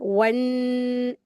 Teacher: वाव के लिए हमेशा होठ को गोल करते हैं। वन ऐसे और यह नून मुशद्द है। इसको गुन्ना के साथ पढ़ेंगे।